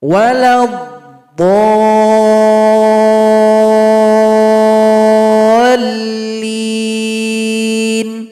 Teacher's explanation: diperpanjang enam ketukan atau enam harakat sebelum ditekan dengan tashid. Disebut Mad Lazim Muthaqqal Kalimi, dalam "walad-daallin".